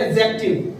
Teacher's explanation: डी इसमें नहीं आएगा। जब डी और जे साथ में आते हैं तो वहां पे डी का उच्चारण नहीं किया जाता। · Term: डी साइलेंट